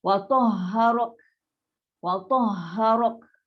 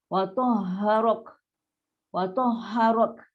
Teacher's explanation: Wa nipis, ta tebal, ha rendah. Ra ni tebal, ra ni tebal. Kaf ni nipis.